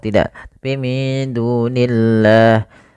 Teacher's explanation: pada lafal Allah ketika dia di kasrah tidak boleh dibaca tebal lamnya